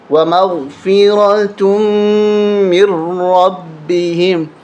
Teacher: یہاں نون کو نہیں پڑھنا، تا کو میم کے ساتھ ملائیں گے